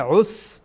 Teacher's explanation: اولا عین از وسط حلق